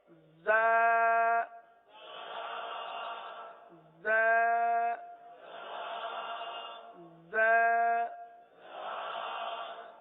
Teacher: زبان زیادہ تر نیچے کی جانب رہتی ہے اور نیچے کی جانب رہ کر زا سیٹی کی آواز کی طرح اس حرف کی آواز نکلتی ہے